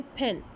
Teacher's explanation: aspirated पर sound at the initial use करेंगे